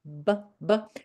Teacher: B and P are just short connections between the lips